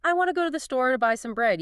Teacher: You tap on go store, buy bread. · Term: stressed syllable